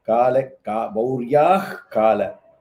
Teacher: So Mauryaha and Kalakeya, the Visarga will bring ich sound.